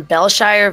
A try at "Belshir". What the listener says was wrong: It's just Belshire. Yeah, if it was Shire, there'd be an E at the end.